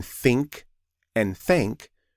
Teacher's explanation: Today we learned that TH represents two different sounds in American English. One sound is unvoiced, like in think and thank, where only air comes out and the vocal cords don't vibrate.